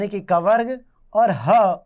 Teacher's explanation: इनका उच्चारण स्थान कंठ है इसीलिए इन्हें कंठ वर्ण भी कहते हैं